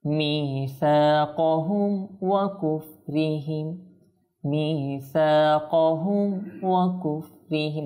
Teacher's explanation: ইজহার শাফাউই বলতে আমরা সেখানে ইজহার স্পষ্ট করে কোনো গুন্না ছাড়া, কোনো ইকফা ছাড়া আমরা সেটাকে পড়ব।